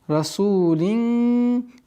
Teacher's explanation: Иннаху лакаулу расу, долгота в размере двух огласовок даммы. Расулин, здесь у нас ихфа, мягкая ихфа в размере двух огласовок.